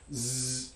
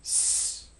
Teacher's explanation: the difference between the sound zzz and the sound s is voicing. Z is a voice alveolar fricative.